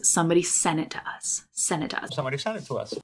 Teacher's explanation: a T after an N sometimes just disappears